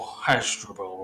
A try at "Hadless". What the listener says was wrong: you've just butchered my name there. Hadless. Only the 2 syllables.